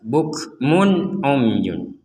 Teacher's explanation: Bukmun umyun, jelas, tidak ada samar, tidak ada dengung sama sekali.